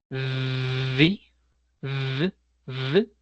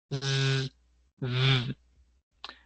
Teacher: si pronunciamos el sonido, vamos a sentir vibración sí o sí en la garganta